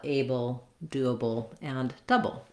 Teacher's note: So the bull stays the same in able, doable, and double. It's always unstressed, doesn't have much vowel. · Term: syllabic L